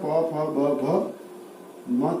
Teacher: उ प फ ब भ तक की ध्वनि ओष्ठ से उच्चारित होती है और इसलिए इसको ओष्ठ ध्वनि कहा जाता है